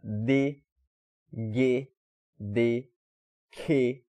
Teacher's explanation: Todas essas consoantes, tu solta uma explosãozinha, tu segura o ar e depois tu solta repentinamente para falar ela. Elas são chamadas de consoantes plosivas ou oclusivas.